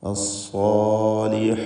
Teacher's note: അസ്സാ എന്ന് പറയുമ്പോൾ പ്രത്യേകം ശ്രദ്ധിക്കുക. സ്വാദ് ഇസ്തിഅലാഇൻ്റെ ഹർഫാണ്, തടിപ്പിച്ച് തഫ്ഖീമോടെ ഉച്ചരിക്കണം. അതിൻ്റെ ദീർഘാക്ഷരമായ അലിഫിലും തഫ്ഖീം ഉണ്ടാവണം.